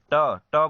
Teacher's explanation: ट, ट बोलिए, देखिए आपका जीभ है जो है मुख में ऊपर जाएगा और पीछे की ओर मुड़कर वह तालु को स्पर्श करता है, इसीलिए इसे मूर्धा व्यंजन कहते हैं। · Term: मूर्धन्य व्यंजन